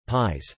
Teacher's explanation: the letter ⟨i⟩ if followed by another vowel in the same word usually represents /j/, but it also has the palatalizing effect on the previous consonant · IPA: [pʲjɛs]